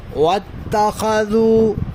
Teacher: ذال ہے، دونوں دانتوں کو ملنے نہیں دینا، زبان کی نوک دانتوں کے کنارے پر آئے گی۔